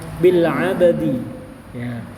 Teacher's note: Coba a-nya itu bukan a ya, tapi a ke samping. Senyum.